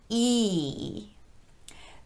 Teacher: the tongue is only in one position which is very high in the mouth so high that it's almost touching the roof of the mouth but not quite this is a very tense vowel so the muscles of the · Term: long e